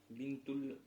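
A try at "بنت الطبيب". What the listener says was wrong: Тут уже не аль, а шамсия здесь. Та шамсия. Сан. Бинтут табиби. Бинтут табиби. Бинтут табиби.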